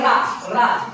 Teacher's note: जैसे देखो बोलते हैं रा, रा जो जीवा है हमारी देखो ऊपर जाती है और उलट जाती है, रा रा तो हिलती रहती है, मतलब प्रकंपित, एक कंपन उत्पन्न हो रहा है जीवा में हमारे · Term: प्रकंपित या लुंठित वर्ण